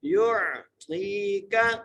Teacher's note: یا کو عین سے ملانا ہے، تو کو ایک الف مقدار کھینچ کے پڑھنا ہے